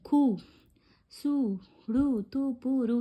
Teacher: ஒரு மாத்திரை அளவிலிருந்து குறுகி ஒலிக்கும் உகரம் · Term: குற்றிய லுகரம்